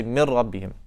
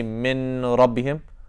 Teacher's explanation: You say mir rabbihim. So you're combining the nun sakina with the ra.